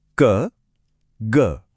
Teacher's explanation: इन ध्वनियों को बोलते समय बस हल्की सी हवा निकलती है। जैसे मोमबत्ती को बुझाना नहीं सिर्फ उसकी लौ को हल्के से हिलाना हो। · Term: अल्पप्राण